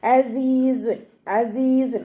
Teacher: തൻവീൻ ആണ് വന്നിട്ടുള്ളത് തൻവീനിനു ശേഷം ഇവഹാറിന്റെ ലെറ്റർ ആയിട്ടുള്ള ഹ വന്നിട്ടുണ്ട് അപ്പോ തൻവീനിലുള്ള നൂനിന്റെ സൗണ്ടിനെ വ്യക്തമായിട്ട് കേൾപ്പിക്കുക മണിക്കാതെ ഉച്ചരിക്കുട്ട